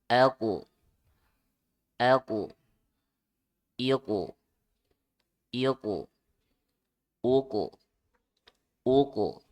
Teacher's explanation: Kolkolah dipantul bacanya ya. Terus kof itu huruf tebal ya, huruf tebal. Jadi ditebalkan juga ya, dipantul dan ditebalkan. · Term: kof kolkolah